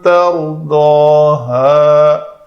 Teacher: تا کو پتلا رکھ کر را کا سکون پر کریں گے، کیونکہ را ساکن کا اگر ما قبل اس سے پہلے والا کلمہ مفتوح ہو یا پیش والا ہو تو اس کو پر پڑھتے ہیں۔